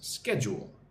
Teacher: Emphasis on the first syllable.